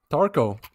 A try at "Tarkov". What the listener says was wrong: Tarkov? Tarkov. Do you not pronounce the V?